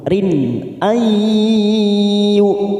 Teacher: nun sukun bertemu ya namanya idgham biguna, kita tekan 3 ketuk